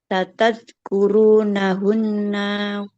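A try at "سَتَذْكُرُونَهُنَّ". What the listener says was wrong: boleh panjang. Nggak boleh panjang nunnya.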